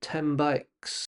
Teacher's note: the N of 10 doesn't sound like N. It sounds more like M. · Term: Sounds that change